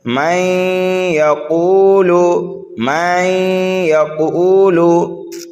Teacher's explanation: تو یہاں پر جو ہے ادغام ہو رہا ہے، اس لیے کہ نون ساکن کے بعد یا حروف یرملون میں سے آ رہا ہے، تو یہاں پر کیا ہے، گننا کر کے پڑھیں گے